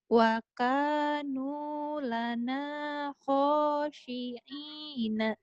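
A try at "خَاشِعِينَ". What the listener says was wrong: Kho-nya kurang kotor ya. Kho. Khashi'ina.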